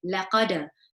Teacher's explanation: Then you've got laqad, so you've got qaf, which is a heavy letter, and then you've got dal, which is a qalqala letter, and so I would bounce on it